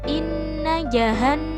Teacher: terdapat huruf nun yang berharakat tasydid maka dibaca berdengung panjang dua ketukan atau satu Alif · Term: bacaan gunnah